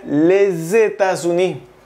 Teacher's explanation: Por ejemplo, les États-Unis, aquí tienes que pegar la S con la E, porque te dije que se pronuncia le, pero tienes que pegar las palabras